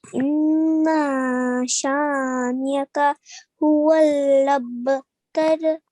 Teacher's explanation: you nicely elongated the sha as well because there was an alif mad